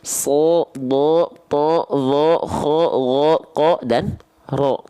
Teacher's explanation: ketika fathah bunyinya bukan A, tapi dia akan cenderung seperti bunyi vokal O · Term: huruf tebal